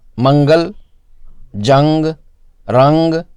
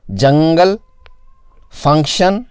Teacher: ان الفاظ میں نون اخفاء سے ہی ادا کیا جاتا ہے، بس اتنا فرق ہوتا ہے کہ اس کی مقدار کم ہوتی ہے